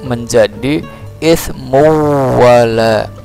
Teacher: Bacanya ismun wala menjadi ismu wala, langsung masuk ke wawu. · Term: idgham bi gunnah